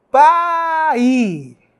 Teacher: parece que a onda sonora ela está diminuindo ela está se apagando o i o fonema I ele se apaga ele perde força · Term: decrescente